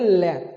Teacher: अगला हिस्सा है आपके ऊपर जाकर ऊपर जाकर टच होएगा और जो हवा है जो तुम्हारे सांस की जो हवा है वो बराबर से दोनों साइडों से बाहर निकल जाएगी